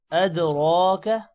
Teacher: دال پر قلقلہ ہوگا، را موٹا ہوگا، اور را پر کھڑی زبر بھی ہے، کھڑی زبر کی وجہ سے تھوڑا سا لمبا ہوگا، اور کا کو لمبا نہیں کرنا.